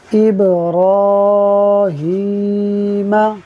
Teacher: ابراہیم، دیکھیے را کے اوپر کھڑا زبر ہے، یہ تھوڑا را سے ہٹ گیا ہے مگر یہ را کے اوپر ہی ہے، تو را پر کھڑا زبر ہو تو را کو پر پڑھتے ہیں